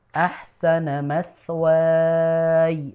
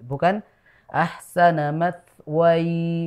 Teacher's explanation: Jadi dipanjangkannya itu wanya, bukan ya-nya.